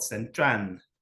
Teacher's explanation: words don't end in L they change it to an N